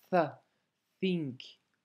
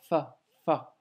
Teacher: Par contre, le tha, c'est pas le cas, car ta langue doit légèrement sortir. Le bout de ta langue doit sortir et tes dents du haut, quand tu prononces le tha, vont toucher légèrement ta langue.